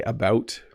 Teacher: When I say about, it has kind of a rounded O sound, about.